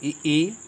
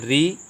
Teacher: कंठ से क्या निकलता है आ, तालु से ई, और मूर्धा से री, और ओष्ठ से उ निकलता है।